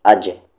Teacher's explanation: یہاں پر قلقلہ ہو رہا ہے، جیم ساکن ہے، اج، آواز کو باؤنس کریں گے.